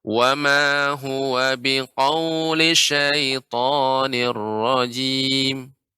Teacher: Seharusnya linya enggak dibaca panjang. Dibaca langsung cepat.